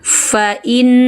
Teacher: jangan ucapkan 'faa', jangan panjangkan 'fa'